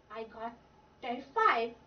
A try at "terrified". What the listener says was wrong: Terrified? What's terrified? There's a syllable missing. It's not terrified, it's... What's the root word of that word? Terror. Yeah, so terrified. Yep, don't leave out the syllables.